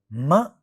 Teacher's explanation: Ma is a bilabial nasal sound.